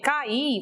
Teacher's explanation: ocorre nessa sílaba um hiato. São duas vogais A e I que eu tenho que separar, colocá-las em sílabas distintas.